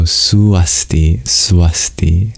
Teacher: Yes, due to Sandhi rules, if you have another vowel joining together with U, it becomes the semi-vowel V